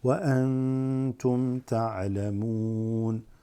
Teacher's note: noon sakina followed by ta makes ikhfa.